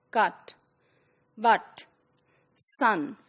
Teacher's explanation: instead of you know rounding it is unrounded